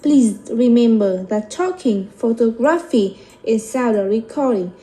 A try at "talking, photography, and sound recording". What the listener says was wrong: Nhớ này, khi mà em kể ra đúng không? Thì em sẽ, những cái đằng trước sẽ lên, còn cái cuối thì xuống. Nhưng mà lên âm tiết cuối á, chứ không phải lên âm tiết gần cuối nhé. Không phải talking